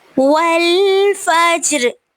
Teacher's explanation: والفجر پہ جیم پہ کلکلا ہو رہا ہے، را کو ہم وقف کی صورت میں ساکن کر دیں گے.